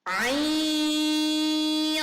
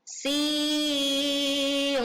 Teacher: ain, dengungnya tipis, sedangkan saat membaca sin, nah itu menjadi tebal karena di depannya huruf qaf adalah huruf isti'ala